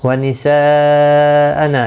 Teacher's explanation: یہاں پر پھر سے مد متصل ہے، 4 الف کی مقدار کے برابر کھینچ کر پڑھیں گے. نا الف مدہ ہے، 1 الف کی مقدار کے برابر کھینچ کر پڑھیں گے.